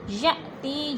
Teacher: ولا یأتین ببہتان، ولا پہ الف مدہ، یأتی، یا پہ حمزہ ساکن ہے، جھٹکا دے کے پڑھیں گے۔ تی پہ یا مدہ، یا ساکن سے پہلے تا کے نیچے زیر ہے تو یا مدہ کو 1 الف 2 حرکات کے برابر لمبا کر کے پڑھنا ہے.